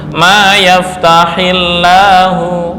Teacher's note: maka cara membacanya, lam pada lafdzul jalalah adalah dibaca dengan tarkik